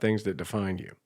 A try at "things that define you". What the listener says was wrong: it sound like you're saying things that defined you